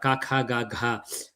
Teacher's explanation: the first one is voiceless, the second one is aspirated sound of the same, then voice, then aspirated of the same